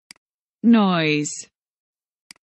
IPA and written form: nɔɪz (Noise)